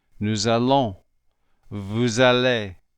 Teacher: This is called liaison, and it works this way with all final consonants followed by a vowel. When we slide the S into the A, you will notice that it almost sounds like a Z. Nous allons, vous allez.